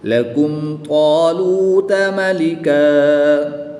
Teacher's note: دو زبر کی تنوین کو وقف میں الف مدہ سے تبدیل کر دیں گے